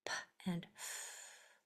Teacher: The P and the F are voiceless. only air